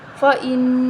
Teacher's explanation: پڑھیں گے فا زبر فا حمزہ نون زیر ان فا ان اب یہاں نون مشدد ہے اس پر غنہ کریں گے